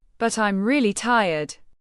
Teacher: Stress really tired to explain why they prefer an easier option.